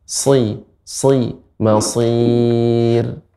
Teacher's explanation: shad merupakan huruf istilla dan itbaq. Sehingga ketika kasrah dia akan lebih terasa tebal.